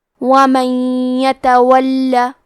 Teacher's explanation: کلمت ومن کے آخری میں نون ساکن ہے پھر حرف الیا آتا ہے. کلمت یتولی یا حروف الادغام بغنہ میں سے ہے تو ہم یہ حکم کو غنہ اور تشدید کے ساتھ ادا کریں گے